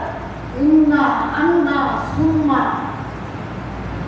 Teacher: 16 নম্বর মাখরাজ মানে মদের মুখের খালি জায়গা হতে মাদের হরফ উচ্চারিত হয় আ ও ও। 17 নম্বর মাখরাজ নাকের পাশে হইতে গুণনা উচ্চারিত হয়